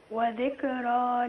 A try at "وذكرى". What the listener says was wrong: بص كده، ما قولش وذكى، لا، وذكرى.